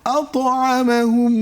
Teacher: جوع বেশ আল্লাযী টেনেছি আচ্ছা আত না বলে বললাম কেন কারণ এখানে কলকলার 5টি হরফের মধ্যে একটি হরফ ত এসেছে তাই আমরা এখানে কলকলা করে ফেলেছি